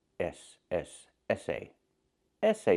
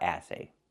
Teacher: We want the sound like in red and 10, It's more closed. Essay. Essay is the pronunciation, not assay.